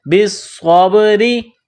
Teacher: را کے نیچے زیر ہے تو را کو باریک کرنا ہے.